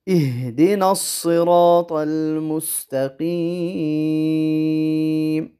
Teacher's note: ہا کو واضح کرنا ہے، ہا اور حا میں فرق ہو